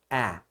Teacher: como se você falasse o e só que com a boca mais aberta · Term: som intermediário